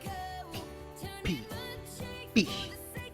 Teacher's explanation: P is a short breath coming out on your mouth, a burst of it.